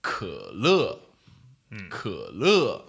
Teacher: third tone, nice and croaky and low and short